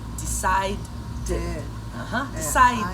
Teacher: realmente a gente acrescenta uma sílaba a mais